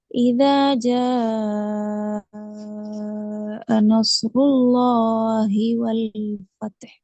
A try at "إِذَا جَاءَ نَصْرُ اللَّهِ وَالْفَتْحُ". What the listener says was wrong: ஃபதஹ் ரெண்டா பழகிக்கிறதால அது பிரச்சனை. இத் என்று நின்று இஹ்க்கு வர்றதுக்கு பழகும். வல் ஃபத் வல் ஃபத்.